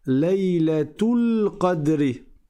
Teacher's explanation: Si tu fais la liaison, tu prononces le ta marbouta. Le ta en fait, tu dis laouilatr. · Le alif ici c'est un alif de liaison donc je ne le prononce pas. Donc je passe directement directement du ta au lam et je dis laatuladr.